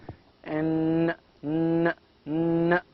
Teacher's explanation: In alveolar, we have a nasal sound